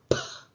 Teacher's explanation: hay una oclusión del aire y después hay una explosión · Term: oclusiva